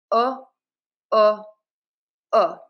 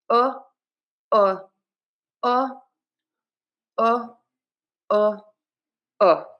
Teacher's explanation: So, my mouth is rounded and relaxed. The back of my tongue is pulled up. Uh uh uh. the middle of my tongue or the tip of my tongue rather is in the middle of my mouth. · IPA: /ʊ/